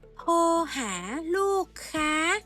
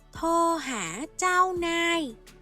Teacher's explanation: chữ /thooh/ này là từ bất quy tắc vì nó có chữ cái /roo rueaa/ nhưng không được phát âm r sound